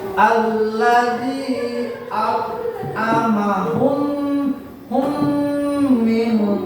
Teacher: Dengan demikian dapat disebutkan bahwa disebut idgham misli apabila ada mim sukun bertemu dengan huruf mim. Cara membacanya, memasukkan mim sukun ke dalam huruf mim disertai dengan suara gunnah.